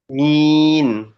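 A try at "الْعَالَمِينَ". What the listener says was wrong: Agak ditarik lagi bibirnya.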